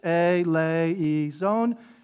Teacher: you stress the lay and not the e